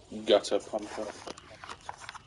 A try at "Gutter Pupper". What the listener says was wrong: Pupper. Not pump.